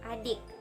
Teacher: bunyi I agak tinggi tak bulat.